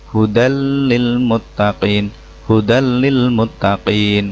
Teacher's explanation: huruf nun mati dileburkan tanpa dengung · Hudan melebur ya, hudal lil. Nah, jadi bukan hudan lil lagi ya. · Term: Idgham bilagunnah, idgham bila gunah